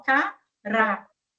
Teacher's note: Então, cará é a segunda sílaba que é tônica. Então, vejam aqui que nós temos a marcação da tonicidade da sílaba aqui antes da segunda sílaba do ra. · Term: sílaba tônica